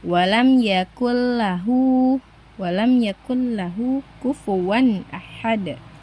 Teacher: Jadi nun sukunnya tidak perlu dibaca teman-teman. Langsung dimasukkan saja ke huruf lamnya, tapi tanpa disertai dengung di hidung. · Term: idgam bilaguna